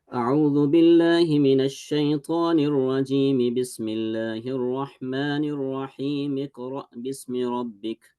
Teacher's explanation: pronounce the letter meme with kasra at the end of seeking refuge, as well as meme in ar-rahim with a kasra, and dropping the linking hamza from ikra bismi rabbik